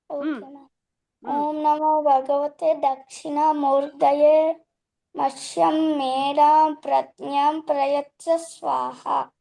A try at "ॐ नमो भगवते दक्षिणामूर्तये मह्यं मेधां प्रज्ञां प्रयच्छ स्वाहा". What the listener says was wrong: Very good. You have learned it correctly. Very good.